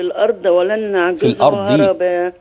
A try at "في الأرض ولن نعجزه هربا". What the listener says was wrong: الضاد مكسورة يا أمي. في الأرض.